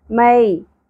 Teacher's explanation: لام ساکن پہ قلقلہ نہیں ہونا چاہیے، غل نہیں پڑھنا، غل۔ مئی یا ساکن حرف لین ہے، یا ساکن سے پہلے زبر ہے اس لیے اس کو نرمی سے پڑھیں گے، میں نہیں پڑھنا، مئی۔